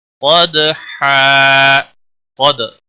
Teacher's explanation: قاف کو موٹا پڑھنا ہے، دال پر قلقلہ ہوگا، دال ساکن پر قلقلہ ہوگا